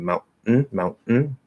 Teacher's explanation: the t when you stop the t you don't have to actually go into the position you can just do a straight glottal and it'll sound like a stop t and so that allows